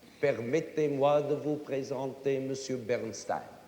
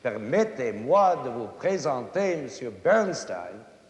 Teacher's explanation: French is a language that has almost no strong accents at all. Almost every syllable in it is equal, not in length, but in stress, in accent. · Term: equal stresses